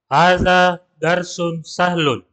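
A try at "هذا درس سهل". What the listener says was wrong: Ya baik, hadza darsun sahlun. Ahsan.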